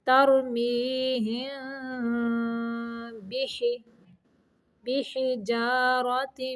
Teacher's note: تَرْمِیہِم یہاں دیکھیں ہم پہ، یہاں پہ میم کے بعد با آ گیا ہے، تو یہاں پہ اخفاء کا قاعدہ ہے، میم کی آواز کو چھپا کے نہ کرتے ہوئے نکالیں گے